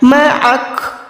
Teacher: یہ کاف باریک ہے، کاف زبر تو یہاں پر ہم رکنے سے کاف ساکن کر رہے ہیں، لیکن یہ والا کاف ساکن حروف کلکلا میں نہیں آتا، تو یہاں پر آپ نے آواز کو نہیں لوٹانا